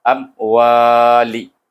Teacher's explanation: hamzah bertemu dengan mim yang mati, baca dengan izhar syafawi. Bunyi dia tutup bibir.